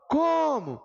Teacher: Vejam que o som estica no co.